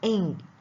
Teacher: the soft palate is lowered and all the air passes out through the nose the mouth is blocked by the back of the tongue pressed against the soft palate · is lowered and all the air passes out through the nose the mouth is blocked by the back of the tongue pressed against the soft palate this sound is voiced the chief on nasal consonants man named